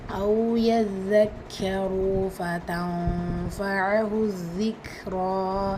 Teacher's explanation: நூன் சுக்கூனுக்கு அப்புறமா letter ஃபா இருக்குது. இது இஹ்ஃபாவுடைய சட்டம். நூனை பாதியாக மறைச்சி குன்னா செஞ்சு ஓதணும்.